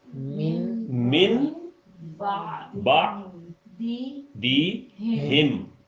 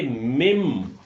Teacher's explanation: اب چونکہ آپ نے یہ سیکھ لیا ہے کہ اقلاب کیا ہوتا ہے، تو اقلاب یہ ہوتا ہے کہ اس کے اوپر چھوٹا سا میم جب لکھ دیں تو پھر آپ نے نون کی آواز کو بیچ میں سے مائنس کر دینا ہے